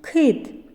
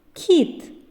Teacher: твердий і пом'якшений звуки к